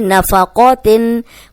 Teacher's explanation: نفقاتن قوف موٹا ہے تو زبر کے ساتھ بھی ہم اس کو موٹا ہی پڑھیں گے